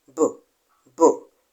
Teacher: that is how to describe a voice consonant sound b boom there is a vibration in your in your throat when you pronounce the sound